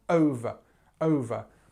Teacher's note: And actually, if you remember us talking in previous videos, this schwa sound, over, over. So we stress on the first syllable, and then the second part, this v, has a very small vowel sound.